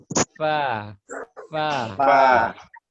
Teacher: 1 tempat keluar ya huruf fa ujung gigi seri atas bertemu dengan perut bibir bagian bawah